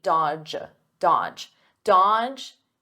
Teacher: notice here the D is silent the middle D